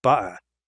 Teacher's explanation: Glottalized t, for example, in Cockney English, makes butter be pronounced buh-er.